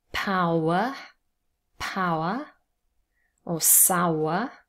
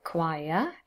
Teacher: there's one syllable with a diphthong and then there's a second syllable with a schwa and remember the schwa is never stressed so the stress is on the first syllable and then the